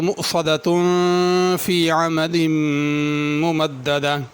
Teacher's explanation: مؤصدہ میں حمزہ ہے، اس کو موصدہ نہیں پڑھنا، واو کی آواز نہ نکلے بلکہ حمزہ ادا ہو، صاد کو پر کرنا ہے، اگر رکیں گے تو اس کو ہا پڑھیں گے مؤصدہ، اور اگر آگے ملا کے پڑھنا ہو تو مؤصدۃ فی عمد ممددہ، ملا کے پڑھیں گے تو مؤصدۃ پہ پھر غنہ ہوگا